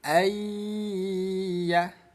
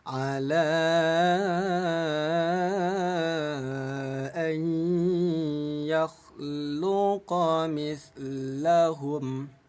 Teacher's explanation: Bi gunnah artinya dengung. Jadi cara bacanya bunyi nun, kita masukkan ke huruf ya, lalu dengungkan 2 ketukan. Yang tadinya an yakhluqa menjadi ayyah. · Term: idgham bi gunnah